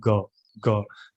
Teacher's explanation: जैसे अगर हम बोलते हैं ग, ग, तो आपने देखा होगा जीभ हमारा पिछला जीभ का हिस्सा ऊपर लग रहा है